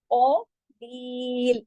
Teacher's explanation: इसको हमने बिल्कुल बारीक पढ़ना है, और ली को 2 हरकत खींचना है, लास्ट वाले लाम को उधर ही रोक देना है जमाओ के साथ।